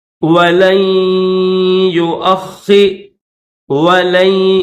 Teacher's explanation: نون نہیں پڑھیں گے، صرف یہاں پر غنہ کریں گے